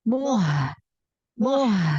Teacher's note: turunkan lagi makhraj huruf H dari tenggorokan bagian bawah